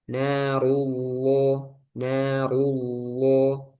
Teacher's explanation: Lamnya lafzul jalal Allah. Karena sebelumnya domah ditebalkan. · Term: Tafkhim